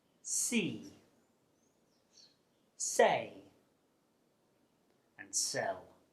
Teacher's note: the S sound is made through the mouth and it's unvoiced which means you don't use your vocal cords to make the sound it's defined by the shape of your teeth and the position · you create friction through clinched teeth by directing air flow with the tip of the tongue the S sound is made through the mouth and it's unvoiced